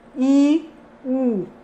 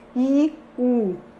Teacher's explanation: O primeiro nível, a vogal é alta, não é? A mandíbula está fechada.